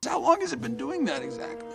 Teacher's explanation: T sound in it becomes a stop T sound it and the Z sound is linked to the following vowel sound and so all three words form one chunk as a been